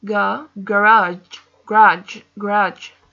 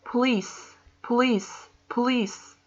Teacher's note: We feel the stress in the ending.